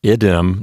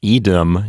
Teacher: So I don't think getting rid of a doubled consonant is going to lengthen the vowel with compensatory lengthening. So notice that in idem, the neuter form, you have a short I, whereas in masculine, īdem, you have a long I.